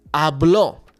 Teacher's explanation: if I want to say él habló, I need to put the emphasis on that o at the end.